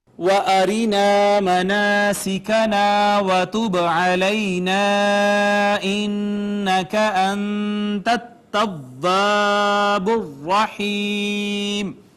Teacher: را مکسور ہے لہٰذا باریک پڑھی گئی